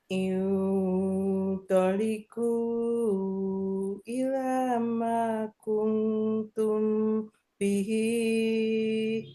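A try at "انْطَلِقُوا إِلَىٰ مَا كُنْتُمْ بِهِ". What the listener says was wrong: Hi-nya kepanjangan. Hati-hati, 2 harokat aja. Bihi, segitu aja.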